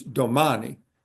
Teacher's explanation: You stress the second to the last syllable.